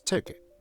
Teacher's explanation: ''TI'' is stressed, so it is longer. ''KUHT'' is unstressed. Because of this, the vowel often becomes a schwa.